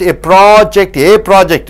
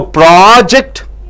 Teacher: It is noun and verb stress. See, noun, the first syllable should be stressed. For verb, the last syllables should be stressed.